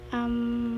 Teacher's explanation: the learner prolonged his pronunciation of the article ah and added m